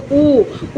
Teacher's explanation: ओ ओ आप जब बोलते हैं तो कंठ का भी यूज होता है और ओष्ठ का भी यूज होता है